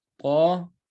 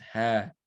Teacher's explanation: It's 2 counts. The ta, you extend it, ta, and the ha, you extend it for 2 counts, ha. So you're not going to say taha.